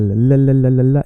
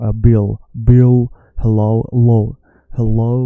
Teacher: In Swedish, as in Spanish, the L is la la la. Your tongue is touching your teeth. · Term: soft L